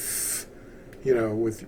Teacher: And there's no TH sound like th, when your tongue gets in between your upper teeth